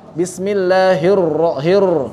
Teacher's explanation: Satu huruf yang kata beliau ini sangat lama untuk mendapatkannya, huruf ro. Ro beliau ini agak terlalu bergetar. Beliau cerita begitu. Jadi getarannya terlalu kuat.